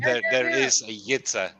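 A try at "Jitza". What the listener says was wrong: There is no yeah. There is no Y in it. J.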